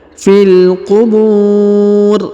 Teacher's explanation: huruf bu dipanjangkan boleh 2, boleh 4, boleh 6 ya, karena di depan huruf bu terdapat waw sukun atau mati sebelum huruf pemberhentian, dan huruf pemberhentian huruf ri disukunkan atau dimatikan ya.